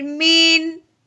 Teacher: عین حرف ہلکی میں سے ہے اس لیے ہم نے نون ساکن پہ گنا نہیں کرنا بلکہ بغیر گننے کے اظہار کے ساتھ پڑھیں گے